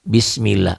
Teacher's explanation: di bawah huruf ini ada merah nih ada kasrah tuh bismillah lafadz Allah dibaca tipis atau tarqiq Kenapa karena sebelum lapar Allah berbaris di bawah di bawah ini